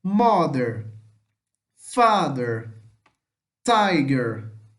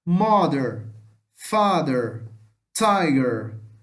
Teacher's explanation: pode ver que a penúltima é mais forte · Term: penúltima sílaba forte tônica